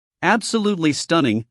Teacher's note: Absolutely stunning, stress on stun.